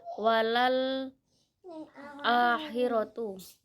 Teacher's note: mat badal karena ada huruf hamzah bertemu dengan huruf mat dalam satu kata. Cara membacanya panjang 2 harokat.